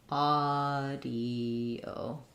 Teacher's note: The AU says the ah vowel.